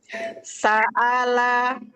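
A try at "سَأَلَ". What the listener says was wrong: Nah, lebih lembut lagi menekan makhrajnya, tidak sa. Sa'ala.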